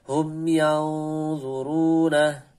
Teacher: Diikhfakan, didengungkan, disamarkan nunnya dan ditebalkan dengungnya.